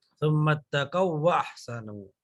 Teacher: اس کو دوسرے میں مرج کر دیتے ہیں، واو کو واو میں مرج کر دیا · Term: ادغام مثلین